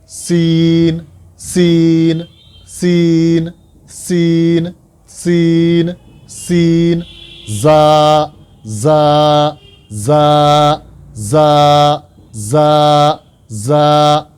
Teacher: سین کو ادا کرتے ہوئے اس طرح کی آواز نکلنی چاہیے، اور اسی طریقے سے زا کو ادا کرتے ہوئے بھی تھوڑی سی سیٹی نما آواز نکلنی چاہیے